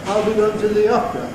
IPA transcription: ɑː.l b.i g.əʊ.n t.ə ð.i ɒ.p.r.ə